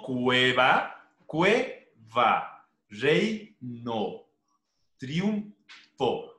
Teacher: O sea, son dos vocales en una sola sílaba. Por eso se las llama diptongos.